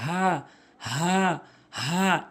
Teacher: এরপরে হা ভুল উচ্চারণ, হা ভুল উচ্চারণ, এর সঠিক উচ্চারণ হচ্ছে হা। হলকের শুরু থেকে হা হা হা এভাবে উচ্চারণ করবেন